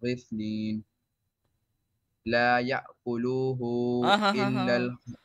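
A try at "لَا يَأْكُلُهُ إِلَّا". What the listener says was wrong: Why are you stretching lamb? I was talking about this lamb, not about this.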